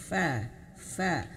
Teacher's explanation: Makhrajnya di sini di bibir bawah, perut bibir bawah atau perut bibir atau bibir dalam nih ya, menyentuh ujung gigi seri atas. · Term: huruf fa